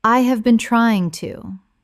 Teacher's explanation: When spoken naturally, the h in have often disappears and the words run together. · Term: connected speech